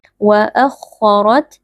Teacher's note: huruf kha huruf tebal dibaca dengan mengangkat pangkal lidah, sama juga dengan huruf ra yang ada di depannya karena ra di sini berharakat fathah.